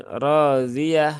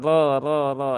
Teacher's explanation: r-nya panjang dua harakat dan ditebalkan cara menebalkannya masih sama ya yaitu dengan cara mengangkat pangkal lidah